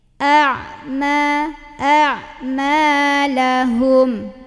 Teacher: Jadi ini hamzah a keluar dari tenggorokan bawah, kalau ain tenggorokan tengah, jadi a dulu baru ain. A, jangan sampai ketukar-tukar jadi a dua-duanya ain, atau jadi dua-duanya hamzah a gitu, atau misal ketukar hamzahnya jadi ain a gitu.